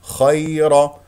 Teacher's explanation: اذا يا اولين لا تضغط على المخرج ولا تخرج معها ه الراء مفخمه لانها مفتوحه